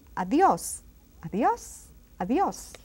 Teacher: it has an accent on the O. And it's pronounced strongly.